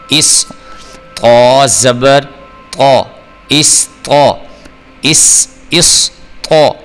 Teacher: صاد کو آپ نے پر کر کے موٹا کر کے اوپر کی طرف منہ کھول کے پڑھنا ہوتا ہے